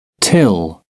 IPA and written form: tɪl (till)